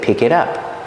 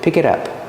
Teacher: we hear the T in it change to a fast D